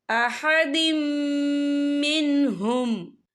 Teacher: یہ دیکھیں احدم، دال کے نیچے تنوین ہے، تنوین کے بعد جو ہے میم آ رہا ہے، اور میم جو ہے حروف یرملون میں سے ہے، تو یہاں پر ادغام ہوگا اور ہم غننے کے ساتھ پڑھیں گے